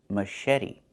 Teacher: The CH makes a soft sh sound, like in fish, mush.